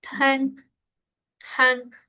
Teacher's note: El airecito, esa nk sale por la nariz.